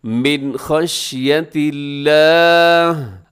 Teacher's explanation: میں سے ہے، یہاں غنہ نہ کیجیے گا، من خشیۃ اللہ، آخر میں جو لفظ اللہ ہے اس کو آپ نے باریک پڑھا ہے